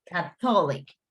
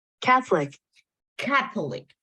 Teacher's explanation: The stress word is in the first part.